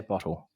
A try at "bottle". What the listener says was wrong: It's the difference between you is kind of dips with the O. Yours stays flat.